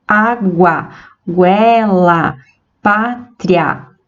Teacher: A semivogal U vem antes da vogal A na palavra água, e quando nós pronunciamos, nós formamos esse som crescente, ou seja, a última vogal é pronunciada de forma mais aberta, mais forte do que a semivogal. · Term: ditongo crescente